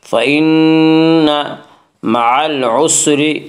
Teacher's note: فإن نون مشدد غنہ ہوگا، غنہ کی مقدار 1 الف ہے۔ فإن مع العسر، مع العسر، را کو باریک پڑھیں گے، اس کا قاعدہ ہے کہ را کے اوپر زبر پیش آئے تو را کو پر پڑھا جائے گا، را کے نیچے زیر آئے تو را کو باریک پڑھا جائے گا، یا را کے نیچے زیر سے را کو باریک پڑھیں گے۔